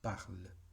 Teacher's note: En este caso también la E caduca tiende a, por lo menos en la lengua oral, tiende a ser un sonido muy cortito, muy oscuro, y que no se acentúa para nada. O sea, la acentuación en este caso es parle. No vamos a acentuar la E caduca como sucede con todas las otras vocales en el francés, cuando se encuentra al final.